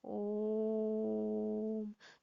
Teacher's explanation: मतलब यहाँ जो ओ है ये प्लुत स्वर है, इस तरीके से बोलते हैं ओम। तो जो ओ है यहाँ पर उसको बहुत ज़्यादा खींच करके बोला जाता है, तो इसलिए इसके आगे 3 लिखा जाता है।